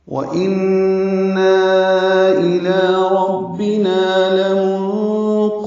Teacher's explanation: واو ہونٹوں کی نا تمام گولائی سے ادا کریں گے، یعنی ہونٹ گول کریں گے۔ ان، یہ نون مشدد پہ غنہ ہے، نا الف مدہ ہے اور اس کے بعد حمزہ آنے کی وجہ سے اوپر چھوٹی مد ہے، مد منفصل۔